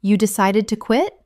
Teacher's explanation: For instance, if a friend says, "I finally decided to quit my job yesterday." You might simply mirror them by saying, "You decided to quit." Utilizing a rising intonation, this invites them to elaborate on their reasons.